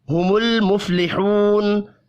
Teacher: لام اور فا ساکن ہے, قلقلہ نہیں کرنا. لحو واو مدہ ہے, 1 الف کے برابر کھینچ کر پڑھیں گے.